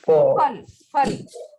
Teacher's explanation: When we pronounce Hindi fur, we use both the lips. Hindi fal, fal, both lips.